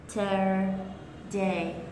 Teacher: trọng âm của nó rơi ở âm tiết đầu tiên